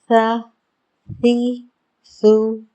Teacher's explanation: नोक हमारे ऊपर के सामने वाले दांतों के किनारों से लग रही है तो हल्की सी ज़बान हमें सामने से दिखाई भी दे रही है। इसी तरह से इसकी सा दाल ज़ा की अदायगी होगी, और हमें ये ख्याल रखना है कि हमने इसमें सीटी की आवाज़ बिल्कुल भी नहीं आने देनी, बिल्कुल भी नहीं।